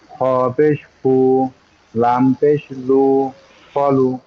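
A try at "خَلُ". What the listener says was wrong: খ পেশ না কিন্তু খ জবর। খ জবর খ, লাম, লাম পেশ লু, খলু। খ জবর খ, লাম পেশ লু, খলু। খ, না জিহ্বা না, জিভ। খটা হচ্ছে কণ্ঠনালীর শেষ ভাগ, মানে গলার শেষ অংশ, যেখানে দাড়ির সাথে লেগে গেছে না।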